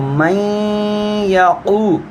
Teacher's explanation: یہاں پر ادغام ہے، چونکہ نون ساکن سے آگے یا حروف یرملون ہے، تو میں یقو، اور پہ ہی واو قو ہے، واو مدہ کا حرف ہے۔